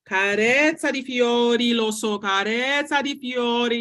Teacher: I'm saying it and I'm keeping the vowels longer and I'm on my breath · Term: Long vowels